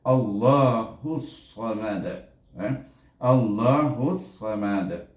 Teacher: bila kita wakaf, kita gunakan hukum qalqalah kubra, kita sukunkan huruf dal itu, jadi bunyinya Allahus samad.